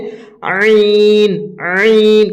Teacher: আর আইন হচ্ছে আইন, আইন গলাটা চাপ দেওয়ার মতন করে একটু একদম গলা থেকে বের করতে হবে, ভিতর থেকে হালাক থেকে বের করতে হবে আইন, আইন।